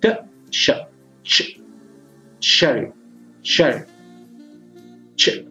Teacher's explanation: Then it is released with raising the blade of the tongue against the heart palate. So it is a compound of stop sound plus fricative sound.